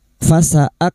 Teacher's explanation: kaf sukun huruf kaf yang memiliki sifat hamas dan syiddah